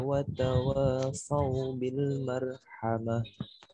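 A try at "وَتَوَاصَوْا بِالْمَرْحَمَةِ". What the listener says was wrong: Jangan marhamah. Hati-hati maknya ditipiskan ya.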